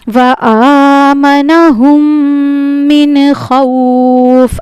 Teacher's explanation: اب یہاں پہ نون ساکن کا اظہار ہوگا. یہاں پہ نون کی آواز کو ظاہر کر کے جلدی پڑھنا ہے.